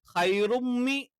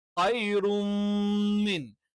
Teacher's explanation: ആ നൂനിന്റെ ഉച്ചാരണം മീമിലേക്ക് അങ്ങ് ചേർത്ത് വായിക്കും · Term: ഇദ്ഹാമും ബിഹുന്ന